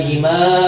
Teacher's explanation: Jadi kita panjangkan dengan empat ketukan ya untuk membedakan nanti mad wajib dalam mad wajib adalah lima ketukan. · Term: mad jaiz munfasil